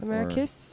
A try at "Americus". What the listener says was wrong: It's Americus. You're saying America. I live in Americus.